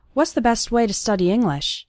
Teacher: And the T at the end of best also kind of disappears.